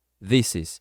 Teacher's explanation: você vai juntar o S com o is, ficando this is, e não this is.